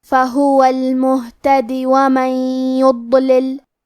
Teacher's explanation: اگر یہ کلمہ کو پوری آیت کے ساتھ ملا کے پڑھے تو ہمیں دال کے زیر کو ظاہر کرنا ہے